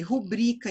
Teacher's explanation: Sílaba tônica é o bri e ela é uma palavra paroxítona